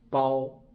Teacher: the second character in 叠词 will always to changed to be first tone